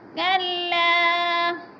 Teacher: الف مدہ کو ایک الف کے برابر کھینچ کر پڑھیں گے